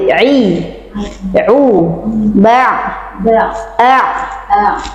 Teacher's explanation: kalau untuk ain tidak boleh tertahan, ya harus dialirkan ya. Suara sebahagiannya harus mengalir. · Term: huruf ain